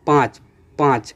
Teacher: 5 में जैसे मुख से भी ध्वनि निकल रही है और नाक से भी ध्वनियाँ निकल रही हैं। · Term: अनुनासिक